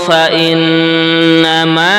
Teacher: nunnya juga tasdid dibaca gunnah mendengung